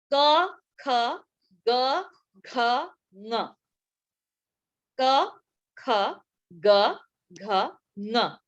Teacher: back of the mouth, आपके मुख विवर के पीछे उच्चारित होता है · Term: वीलर ध्वनि